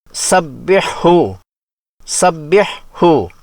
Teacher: حلوے والی ہا کا مخرج درمیان حلق ہے